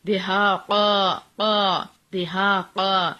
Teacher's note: ہا سینے والی سائڈ سے 2 حرکات لمبا